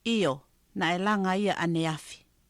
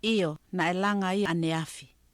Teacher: So the first time she didn't really voice the I. The second time she voiced it a little more. Yeah, I is the Tongan vowel that gets devoiced, really.